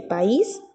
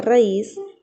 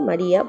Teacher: debe haber un hiato una separación porque la vocal cerrada es la sílaba tónica